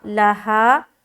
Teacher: آگے لہا ما کسبت، لام زبر لا، ہا الف زبر ہا، لہا. یہاں پر لام کو جلد پڑھ رہے ہیں اور ہا میں 1 الف کے برابر کھینچ رہے کیونکہ یہاں پر ہم الف مدہ کر رہے.